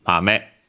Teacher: Okay, actually accented on the last one, so mame.